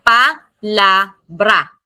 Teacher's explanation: the stress naturally falls on the penultimate or the last but one syllable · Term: penultimate syllable